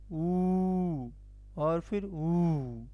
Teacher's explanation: ओष्ठ से हमारा होता है उ और फिर ऊ